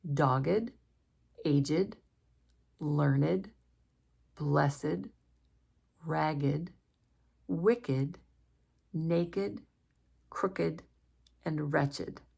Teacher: some adjectives that have the id sound when we would expect them to have either the t or the d sound. I'm going to read each of these words as they would be said if they are adjectives.